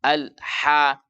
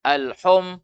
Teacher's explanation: Ingat, ha pedas, ha yang makhrajnya tengah tenggorokan. Ha. Maka buka mulut juga